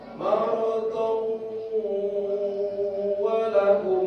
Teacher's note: Kalau terus jadi idgham. Maradon walahum, itu jadi idgham. Jadi tasdid, wawnya jadi tasdid.